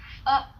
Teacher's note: sounds like the U in the English butt, only longer